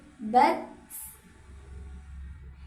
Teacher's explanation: Jadi tak ketika sukun ada desisnya sedikit